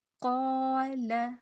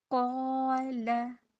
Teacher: जब हम क़ाफ को पुर करेंगे तो इसके साथ जो अलिफ है उसको भी हम पुर करेंगे। और इस बात को भी अच्छे से ज़हन नशीन कर लें कि अलिफ हमेशा खाली होता है, ये मैंने आप लोगों को पहले भी बताया है।